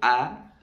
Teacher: Berjauhnya makhraj daripada bibir, ya, daripada mulut kita. Karena hamzah memiliki tempat keluar di bawah tenggorokan atau di pangkal tenggorokan di bagian zakun kita bawah sedikit.